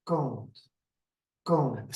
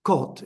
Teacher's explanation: we have 2 vowels that when you produce them, you have to open your nose. So the soft palate goes down. And the left one goes like kąt, kąt. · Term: nasal vowels